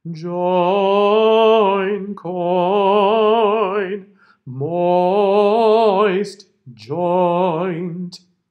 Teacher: the botom very bottom one join coin moist joint okay so you hear both sounds clearly but the second one is much much much much much shorter than the primary one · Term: diphthong